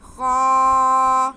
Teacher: خا پہ زبر ہے، ساتھ میں الف ہے، تو یہ الف مدہ ہو گیا. خا کی آواز کو ہم کھینچیں گے